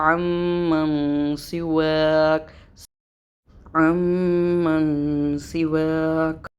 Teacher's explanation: عم میں مشدد کا غنہ کرتے ہوئے اخفا کریں گے ہلکا سا